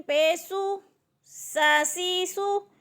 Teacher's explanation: سین سیٹی والے حروف میں سے ہے، جب سین کو ادا کرنا ہے تو سیٹی یعنی زبان سے سیٹی نکلے